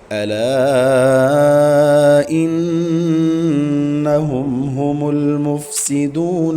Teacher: ہم یہاں اظہار کریں گے کیونکہ میم ساکن کے بعد ہا آ رہا ہے تو ادھر اظہار ہوگا، مطلب بغیر غنہ کے پڑھیں گے۔ ہم المفسدون، ہا حلق کا آخری حصہ جو سینے کی طرف ہے وہاں سے ادا کریں گے۔